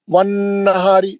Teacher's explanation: नून पे गुन्ना है, राब पतला पढ़ेंगे